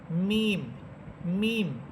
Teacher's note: আর মিম হরফটা উচ্চারিত হবে দুই ঠোঁটের শুকনা অংশ থেকে